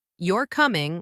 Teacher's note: If I say you're coming with a falling tone, that sounds like a statement.